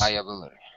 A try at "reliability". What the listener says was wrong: Word stress. I mean, syllable stress.